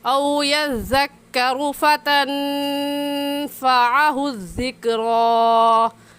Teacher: रा के ऊपर पेश है, इसलिए रा को ऊपर यानी मोटा करके पढ़ेंगे। और मोटा करने का तरीका कि आपके दोनों होंठ गोल हो जाए।